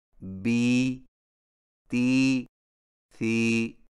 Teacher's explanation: یائے مدہ ہونٹوں کو نیچے کی طرف کھول کر بقدر ایک الف کھینچ کر پڑھا جاتا ہے اور اس کی آواز کا رخ نیچے کی طرف ہوتا ہے